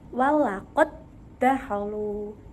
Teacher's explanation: Awalnya ada dua dal, yaitu dal pertama yaitu dal sukun dan yang kedua yaitu dal berharokat fathah. Kemudian dal sukun atau huruf dal yang pertama dimasukkan ke dalam huruf dal yang kedua dan kemudian diberi tasydid. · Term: idgham mutamatsilan